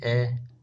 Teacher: जीभ का जो मध्य का हिस्सा है वो थोड़ा सा ऊपर की तरफ हो जाता है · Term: मध्य स्वर